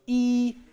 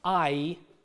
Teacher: valkyrie rattle go inwards and become what's called diphthong eyes so E which is a single vowel with a single quality becomes I which is a vowel which has two elements to it so